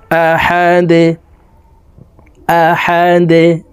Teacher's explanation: দালকে ওয়াকফের ক্ষেত্রে সাকিন করে ফেলবো। দাল যেহেতু কলকলার হরফ, নিচের দিকে ধাবিত করে ধাক্কা দিয়ে সাকিন করতে হবে